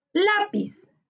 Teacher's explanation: lápiz es una palabra grave su sílaba tónica está en la penúltima sílaba se tilda porque todas las palabras graves que no terminan en